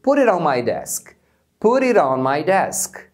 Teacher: Nesse exemplo a gente tem 2 vezes o T sendo reduzido. Put it, e depois o it on.